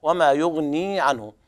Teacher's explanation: وما يغني عنه هنا أيضا يمد الياء حركتين